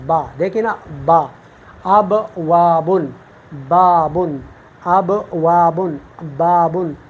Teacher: اوپر والے ہونٹ جب نیچے ہونٹ کی تری والے حصے سے لگ جائے تو وہاں سے ہم با ادا کرتے ہیں۔ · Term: حرف با